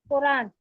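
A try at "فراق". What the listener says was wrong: तो यहाँ तो फेर रे है, कुरान तो यहाँ नहीं है। हाँ फिराक, फिराक, फिराक, हाँ ठीक है फिराक है, फिराक बिल्कुल है। फिराक बोलते हैं, फिराक गोरखपुरी भी है।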